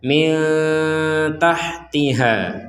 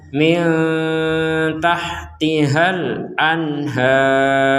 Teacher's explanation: kalau berhenti ada harokat fathah bertemu alif, kita bacanya 2 harokat, kecuali digabungkan dengan kata setelahnya.